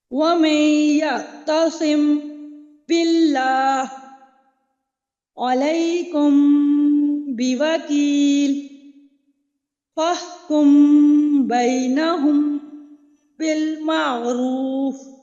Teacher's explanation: میم ساکن کے بعد با آ رہا ہے، تو کیا کیا میں نے؟ اخفاء کیا اور ناک میں آواز کو چھپایا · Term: اخفاء شفوی